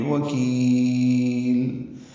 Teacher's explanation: بوکیل کاف باریک ہے، اور کاف کو لمبا کریں گے